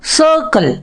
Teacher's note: அந்த ஆரை உச்சரிக்க கூடாது ரொம்ப.